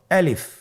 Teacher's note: আলিফ হরফটি মাখরাজ হলো আপনার মুখের শূন্যস্থান থেকে গলা এবং মুখের শূন্যস্থান হতে আলিফ হরফটি উচ্চারিত হয়।